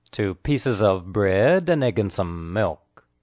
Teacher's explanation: The emphasized words are pieces and bread. The linked words are pieces of, pieces of, pieces of.